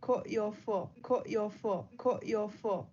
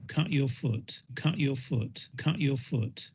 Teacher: in the south they're going to be two different vowels one is strut and one is foot